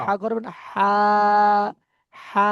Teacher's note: হাটা এই গলার একদম মধ্যখান থেকে, এখান থেকে একটু বড় করে হা।